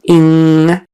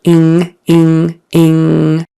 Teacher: the NG is a nasal sound, ing, and your tongue goes back in your mouth, ing. Doesn't necessarily touch anything for the G, although in some areas of the United States it would.